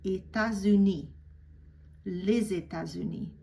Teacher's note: And normally you wouldn't pronounce that S for plural, so it would be état. But because it's followed by an adjective, united, uni, and it starts with a vowel, I'm going to pronounce that S as a Z.